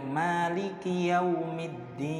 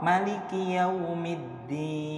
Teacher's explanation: kalimat Maliki Manya itu boleh dibaca panjang boleh dibaca pendek